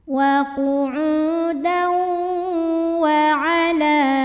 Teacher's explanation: Berikutnya ada hukum idgham bi gunnah, karena ada tanwin fathah yang menghadapi huruf di depannya yaitu huruf waw. Maka tanwinnya dimasukkan ke waw, wa qu'udaw, dan tahan dengungkan.